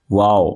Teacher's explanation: واو دونوں ہونٹوں کی گولائی سے ادا ہوتا ہے، واو، اس کے اندر آپ کے ہونٹ ملتے نہیں ہیں، واو، بلکہ دونوں ہونٹ گول ہو جاتے ہیں اور گولائی سے واو ادا ہوتا ہے، ٹھیک ہے۔